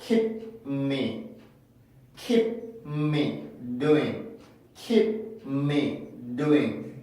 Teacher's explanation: 그 P 발음에서 막아서 N 발음으로 넘겨주는 연습